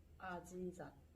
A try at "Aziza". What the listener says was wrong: Aziza. There's no Z in Korean alphabet. Z. Aziza.